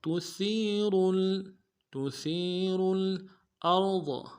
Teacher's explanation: حمزہ کو را کے ساتھ ملانا ہے، را کو موٹا کریں گے، ضاد کو موٹا کریں گے.